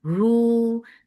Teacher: Lu, for the ma circle ellipse, the sound is short. Ru, sila sughra, make it two counts long